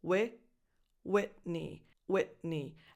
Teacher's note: you have a lax I, as in the pronoun it, Whitney, Whitney. And then that T, because it comes before an N, doesn't really come out.